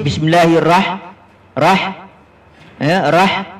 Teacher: Roh bertemu dengan ha mati, bunyinya rah, bukan raha.